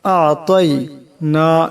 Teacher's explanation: তোর আওয়াজটা মোটা করিয়া পড়তে হবে। আ'তাই না, এখানে নুনের উপর খাড়া জবর, এটা এক আলিফ পরিমাণ লম্বা করতে হবে।